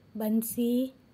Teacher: बंसी में न की आधे न की साउंड आती है, तो इसको अनुस्वार कहते हैं। जो बिंदी ऊपर लगी होती है उसको अनुस्वार कहते हैं।